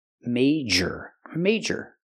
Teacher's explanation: major use the long a plus the J sound like in juice and jump